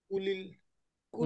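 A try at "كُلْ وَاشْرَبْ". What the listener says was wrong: না, কুল, এ ওয়াও এসে শিনকে ধরবে, হ্যাঁ, ওয়াসলার উচ্চারণ হবে না।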